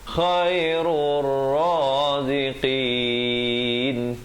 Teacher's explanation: Di sini masuk terus ra pada dhammah di atas ra, alif lam syamsiah. Di sini lam tidak dibunyikan